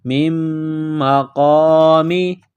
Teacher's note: میم مقامی، میم کو میم کے ساتھ بس کرنا ہے، میم مشدد ہے، غنہ کریں گے، آواز ناک میں چھپائیں گے